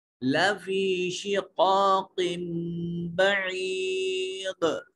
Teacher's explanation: دال کی آواز کو واضح کرنا ہے، یہاں دال ساکن ہونے کی صورت میں قلقلہ واجب ہوگا